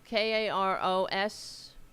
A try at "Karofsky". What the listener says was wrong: No S there. Karof. Drop the first S.